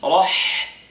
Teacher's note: The ha is hams.